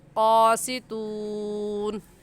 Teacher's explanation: वक़फ़े मुतलक़ की अलामत है, इस पर ठहरना चाहिए तो यहाँ पर हम वक़फ़ करेंगे और वक़फ़ करने का तरीका ये है कि हम आखिरी हर्फ को साकिन कर देंगे और साकिन करने के साथ साथ आवाज़ और सांस दोनों को ख़त्म कर देंगे और ऐसे कहेंगे क़ासितून।